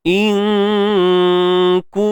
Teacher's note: Kaf baris depan ku. Muncul bibir tak? Muncul. Muncul bibir tak? Muncul. Sebab apa? Sebab baris depan.